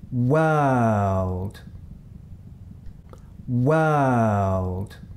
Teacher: If you listen carefully you can hear that the vowel sound in this word is the sound əː. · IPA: /əː/